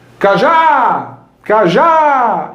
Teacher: esse segundo A ele alonga. E é justamente na vogal que alonga que eu tenho a sílaba tônica.